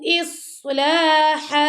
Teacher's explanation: صاد کو موٹا پڑا، لام کو باریک ، اور ہا کے اوپر 2 زبر تھی، جب ہم سٹاپ